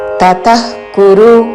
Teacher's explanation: విసర్గ తర్వాత క తో పదము మొదలవుతున్నది కాబట్టి నాభి నుండి శ్వాస వదులుతూ చివరన ఖ లాగా ఉచ్చారణం